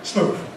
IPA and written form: smuːð (smooth)